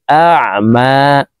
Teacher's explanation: আইন হরফটি হলকের মধ্যখান থেকে উচ্চারণ করব